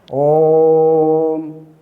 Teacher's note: ओम, वहाँ पर वो प्लुत हो जाता है, मात्रा प्लुत हो जाती है, तिगुना समय लगता है ओ के उच्चारण में